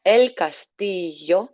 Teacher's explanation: that nice double L in Spanish making that yes sound